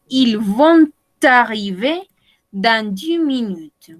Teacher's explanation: Acá podemos hacer el puentecito, podemos hacer la liaison, ¿oui? Porque termina en consonante y empieza en vocal.